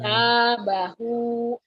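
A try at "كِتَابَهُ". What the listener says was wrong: Kita. Tadi kedengarannya kata bahu ya. Kita bahu. Artikulasinya harus agak jelas.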